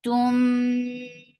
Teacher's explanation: This is Ikhfa Shafawi, so keep the sound in your nose because it has gunna too.